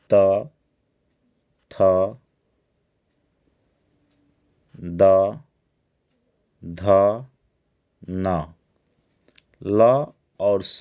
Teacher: यह दंत से बोले जाते हैं